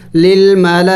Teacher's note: لام کے اوپر کڑی زبر بھی ہے اور مد بھی ہے، تو ذرا لمبا کرنا ہے